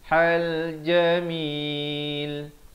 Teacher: ha di pertengahan kerongkong